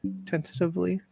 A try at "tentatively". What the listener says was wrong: I think you're putting the wrong emphasis on the syllable or whatever.